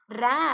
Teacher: நாவின் நுனியானது மேல் அன்னத்தோட முதல் பகுதியை தொட்டு வருவதால் ர தோன்றுகிறது அப்படின்னு சொல்றாங்க இது இடையின எழுத்து என்பதால் இடையின ரகரம் இதுக்கு பேர் வந்து